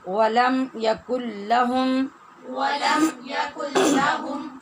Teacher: ولم میں جو آپ نے دیکھا میم ساکن ہے، اس پر بھی اظہار ہوتا ہے